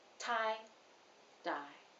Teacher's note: for t which is voiceless the tongue presses more firmly against the tooth ridge but for dye it presses more gently tie dye you can definitely feel the difference in pressure next